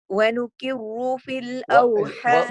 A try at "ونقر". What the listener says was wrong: What is the letter after the noon? No, don't bring it close to the kaf.